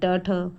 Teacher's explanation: कंपन नहीं हो रहा है मतलब कि अघोष व्यंजन